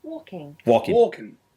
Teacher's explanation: I use the back of the tongue High closing it off at the back